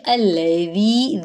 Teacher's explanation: ذی پہ یا مدہ ہے اور ذی میں دال میں سیٹی کی آواز نہیں آئے گی، نرمی سے پڑھیں گے